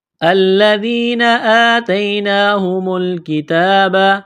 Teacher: ذال کو پڑھتے وقت زبان تھوڑی سی باہر نکالیں گے۔ یہ کڑا زبر ہے، ایک الف کے برابر کھینچنا ہے۔ · لام کو دبائیں گے تشدید کی وجہ سے، ذال کو پڑھتے وقت زبان تھوڑی سی باہر نکالیں گے۔